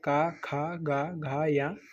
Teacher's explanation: ये सभी आपके कंठ से बोले जाते हैं।